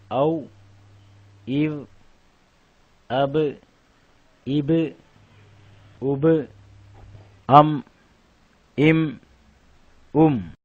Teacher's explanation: மத்தியில் இந்த மூன்று எழுத்துக்களும் வெளியாகும் வாவ் ப மீம் இரு உதடுகளுக்கு மத்தியில் வெளியாகும்